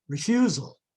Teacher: reduced vowel full vowel reduced vowel as in the word refusal